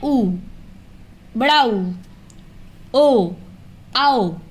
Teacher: ये वे स्वर होते हैं जिन्हें बोलने में ओठ गोल हो जाते हैं, वृत्ताकार हो जाते हैं। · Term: वृत्तमुखी